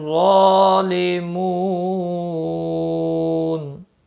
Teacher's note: ظالمون ظا کا یہ مستعلیہ ہے، یہ بھی پر پڑا جائے گا